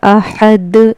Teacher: कलकला होगा यानी इसको पढ़ते वक्त इसकी आवाज लौटेगी यानी वापस आएगी